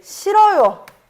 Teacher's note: 히읗이 떨어져 나갔어요. 이거 히읗 탈락이야.